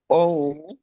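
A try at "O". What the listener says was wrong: না, ধরে রাখবেন। ও। না, ধরবেন ধরবেন, ধরে রাখবেন, একটু লম্বা করবেন। না, স্যারে ই করে মানে দ্রুত শেষ করে দেন কেন? আমি বলি যদি ধরেন 1 সেকেন্ডে, আপনি বললেন মনে করেন যে হাফ সেকেন্ডে, 1 সেকেন্ডেই বলবেন।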